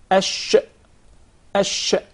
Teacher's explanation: it's the elevation in the middle of the tongue to hit the upper palate, the roof of the mouth. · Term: sheen